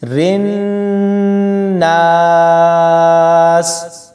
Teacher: را کو نون کے ساتھ ملاتے ہوئے غنہ کریں گے